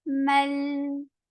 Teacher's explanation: this long vowel is dropped because this is attached with the coming up letter. Mal. It will not be long anymore, but meme is attached with lam directly.